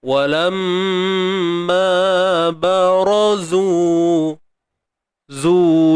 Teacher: Huruf zai baris depan. Kena muncul bibir lah. Dan kita panjangkan 2 harakat sebab ada waw mat kat sini.